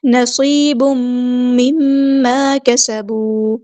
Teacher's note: تنوین کے بعد میم آیا ہے، یہاں پر ہمارے پاس ہو رہا ہے ادغام مع الغنہ یعنی ادغام کامل. · یا مد آئی ہے 2 کاؤنٹ، ہم اس کو لمبا کریں گے